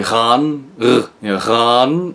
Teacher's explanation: And those are back vowels, and the G before them is something called in linguistics, a voiced velar fricative, or I like to call it the Grendel G, because it's a harsh sound